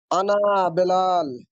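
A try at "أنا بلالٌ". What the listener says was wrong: আনা বিলালুন, আমরা কিন্তু বেলাল বলবো না, আমরা এখন বাচ্চা, আমরা এখনো বড় হই নাই, বড় হবো আরো সামনে গেলে। আনা বিলালুন, আমি বেলাল।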